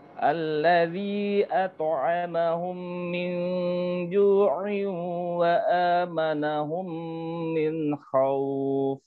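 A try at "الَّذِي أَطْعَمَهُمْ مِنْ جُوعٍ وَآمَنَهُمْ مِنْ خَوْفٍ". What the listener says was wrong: Bagus.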